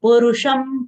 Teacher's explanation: Purusham, pa is having short U sound, ru short sound. Retroflex sh is followed by anuswar. Anuswar sound is half ma.